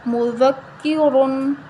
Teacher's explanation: کاف زیر کی مذکی را دو پیش رن مذکرن ٹھیک ہے ذال نرم پڑھنی ہے را کو دونوں موٹا پڑھنا ہے